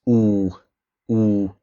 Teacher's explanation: We have o epsilon, this is going to form a very closed and long O, so it's going to be pronounced oo.